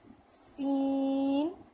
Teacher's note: سین، یہ بھی سٹی کی آواز والا حرف ہے، اس میں بھی ہم دونوں دانتوں کو آپس میں ملائیں گے، اوپر اور نیچے والے، اور پھر سین ادا کریں گے۔